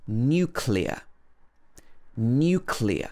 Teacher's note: In the British English pronunciation, this should be n-y-u, new at the beginning. New and then clear, like a clear day.